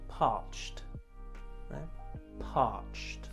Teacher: Notice the ED makes a T sound with the CH.